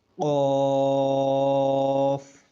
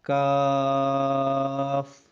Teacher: غین، فا، اس کو نرم پڑھنا ہے، کیا، فا، فا۔ آگے ہے قاف، اس کو موٹا پڑھنا ہے، قاف۔ آگے ہے کاف، اس کو پتلا پڑھنا ہے